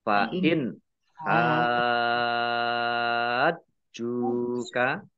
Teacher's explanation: Dibaca ha panjang dulu 6 harokat, baru masuk ke jim. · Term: Mat lazim musaqqal kilmi